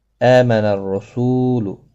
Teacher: آمن حمزہ کے اوپر کھڑی زبر ہے، ایک الف کی مقدار کے برابر کھینچ کر پڑھیں گے